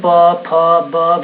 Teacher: आपके लिप्स जो है होठ वो चिपक रहा है, इसलिए इसको ओष्ठ वर्ण भी बोलते हैं।